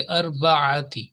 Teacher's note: आइन को जो दरमियान हल्क है वहां से आपने इसको अदा करना है, और सौत जो है इसको आपने जरा थिक पढ़ना, मोटा।